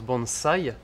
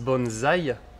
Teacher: Alors, effectivement, la plupart des gens disent bonsaï, mais en fait, en japonais, ça se prononce bonsaï, donc pas avec un z, mais avec un se